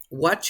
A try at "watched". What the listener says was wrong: Ya, dijiste watch, el verbo nada más. Ahora agrégale este sonido. Watched. Watched. Ya, me estás diciendo solamente watch en presente. Quiero escuchar la T del final que es watched.